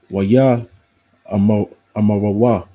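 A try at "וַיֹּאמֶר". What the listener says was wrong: Yeah, you put a double in there, remember?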